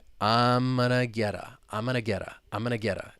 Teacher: that t which is ultimately a flap T because it comes between those two vowel sounds and we're just moving it over and it becomes a part